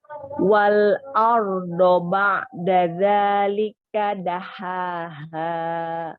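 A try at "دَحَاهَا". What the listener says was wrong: Ha, coba ha dihaluskan lagi ya.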